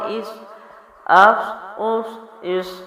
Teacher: حمزہ باریک آواز کے ساتھ صاد کو موٹا پڑھنا ہے